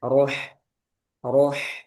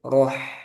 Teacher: ro ini tebal ro. Nah, ha tipis.